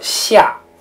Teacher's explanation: 四声呢则是5到1，四声呢在汉语中称作去声 。比如说下，它是由最高的五直接降到最低的一。实际上我们在读拼音的时候读汉语的时候这个三声的读音是非常微妙的。就是即使说不是刚才我们举的这个在两个三声连读的过程中，它其实也是有一个微妙的变声的，在阴平、阳平、去声甚至轻声的前面，这个2、1、4其实它也不是发完